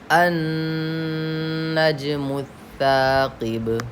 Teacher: सा में सीन का मखरज नहीं ज़ाहिर होना चाहिए, सा को नरम आवाज़ से पढ़ना चाहिए।